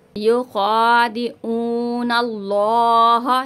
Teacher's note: युखादिऊन अल्लाह, यहाँ पे अल्लाह के लाम को पूर पढ़ेंगे।